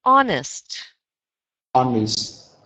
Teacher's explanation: just be very careful in conversation to remember that that H is silent. So exactly like you just said it now is perfect.